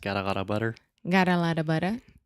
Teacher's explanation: that is the flap T. That is much more similar to a Portuguese R, right?